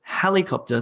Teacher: the emphasis the word stress is on the beginning